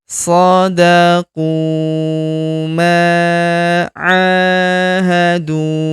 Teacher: Huruf a kita panjangkan dua harakat karena terdapat alif di depannya.